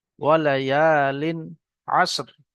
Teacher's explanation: এখানে তানবিনের পরে আইন এসছে, হরফে হালকি 6টি অক্ষরের মধ্যে থেকে আইন এসছে, তাই এখানে গুন্না হবে না।